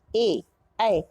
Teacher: इसी तरह से कंठ तालव्य, जिनका उच्चारण कंठ से और तालु से, ए हमारी जीभ जाके तालु को छू रही है, तो कंठ तालव्य वर्ण हुए।